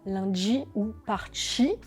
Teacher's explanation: l'affrication des T et des D qui deviennent ch et dj, comme dans lundi ou parchi.